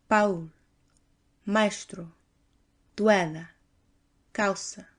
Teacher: the two constituent parts keep their original sounds but are quickly drawn together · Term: diphthongs